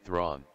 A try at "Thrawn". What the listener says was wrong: Except you roll the R. Thrawn.